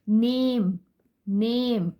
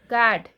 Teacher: तो long vowel में ए की साउंड ए ही है, इट इज नॉट अ.